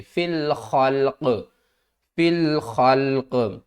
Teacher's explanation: اور وقف کی صورت میں قاف جو ہے وہ ساکن ہوگی تو قاف کے اوپر قلقلہ کریں گے